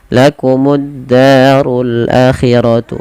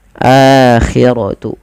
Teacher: di sini a-nya wajib dipanjangkan karena dia ada mad badal, yang dimana mad badal terjadi apabila adanya hamzah bertemu dengan huruf mad, dan sebenarnya di sini ketemu dengan huruf alif, maka a-nya dipanjangkan.